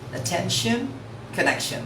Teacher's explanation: I pronounce T-I-O-N as soft shen, as in S-H-E-N.